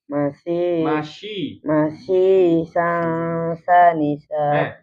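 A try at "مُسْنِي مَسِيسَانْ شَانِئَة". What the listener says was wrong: Syani bukan sanisa. Syanisha. Masyishang. Syang. Syanisha. Masyishang syanisha. Syanisha.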